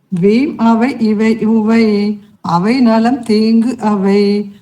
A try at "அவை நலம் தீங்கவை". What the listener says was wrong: அவை நலம் தீங்கவை சேர்த்து படிக்கணும். இங்க இருக்கிறத அப்படியே படிக்கணும்னு இல்ல, சேர்த்துதான்